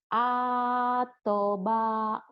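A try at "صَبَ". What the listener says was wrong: Atoba ini kan so. Kalau to ada so. Aduh. A-nya pendek kan nggak ada yang panjang.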